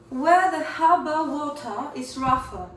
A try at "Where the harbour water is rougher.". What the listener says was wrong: And try not to stress that T in the word water too much. Harbour. Harbour.